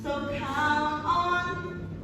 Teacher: The t for count is taken off, but it links to the sound on. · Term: linking